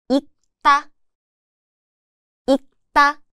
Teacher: it just sounds like 윽, a light, almost muted k sound. The sound is made at the back of the mouth with the back of the tongue gently contacting the upper palate, like 윽. However, there's an exception.